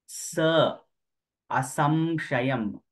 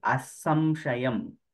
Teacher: when you say sa, your tongue must touch the upper part. Sha is different.